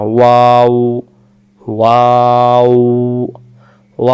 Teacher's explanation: হয় গলা থেকেও না ওয়াও ওয়াও বলার পরে মুখটা একবারে গোল হয়ে যাবে ওয়াও অক্ষর দুই ঠোঁটের মাঝখানের ফাঁকা থেকে পড়তে হয় ওয়াও অক্ষর